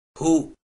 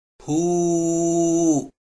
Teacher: ننطق حرف الهاء مع الضمة هو، وعند إضافة حرف المد الواو ينطق هكذا هو